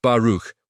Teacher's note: with the k sound like clearing your throat gently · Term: kh sound